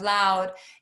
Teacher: many of them round the L's and say wowed instead of loud